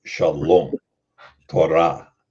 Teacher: the emphasis is going to be on the ultimate syllable